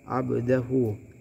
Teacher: Terdapat dua hukum, yaitu hukum pertama adalah qalqalah sughra, di mana qalqalahnya terdapat di pertengahan kata. Cara bacanya dipantulkan. Dan hukum kedua adalah mad silah qasirah, di mana di sini terdapat dhammah terbalik.